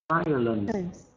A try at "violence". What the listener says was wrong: Okay, don't forget the S sound there at the end.